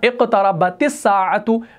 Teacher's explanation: اصل میں ہمارا تا ساکن تھا لیکن ملانے کی صورت میں ہم نے اس کو زیر دے دی